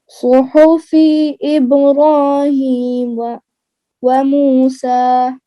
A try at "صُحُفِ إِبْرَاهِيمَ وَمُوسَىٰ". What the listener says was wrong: की जेर को लंबा नहीं करें। صحف إبراهيم وموسى صحف إبراهيم وموسى صحف إبراهيم وموسى